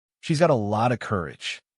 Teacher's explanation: The 't' in 'lot' and the 'of' blend into an almost singular sound. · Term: lotta